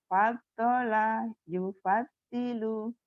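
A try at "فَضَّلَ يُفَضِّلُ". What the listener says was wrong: Faddola bukan pasola. Faddola itu dod. Faddola yufaddilu.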